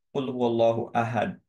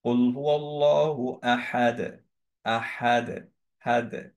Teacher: কিন্তু যদি আমরা এইভাবে বলি কুল হুয়াল্লাহু আহাদ, আহাদ, হাদ, একটা একো আসছে দালে, এইটা হচ্ছে দালের একটা প্রপার্টি। সো এই প্রপার্টিকে বলা হয় হচ্ছে কলকলা। · সো এই প্রপার্টিকে বলা হয় হচ্ছে কলকলা। মখরাজ চেঞ্জ হলো না, একই জায়গায় উচ্চারণ করলাম কিন্তু একটা একো দিলাম, বিকজ হচ্ছে দালের প্রপার্টি একো দেওয়া।